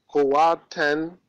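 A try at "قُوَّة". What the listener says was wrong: Say kuwa. Don't say kuwatan. This is wrong. This is wrong. Say kuwa. Read it, but you cannot say kuwatan, you will say kuwa. Because ta tanween at the end is pronounced like ha, kuwa.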